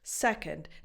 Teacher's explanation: the stress of this word goes on the first syllable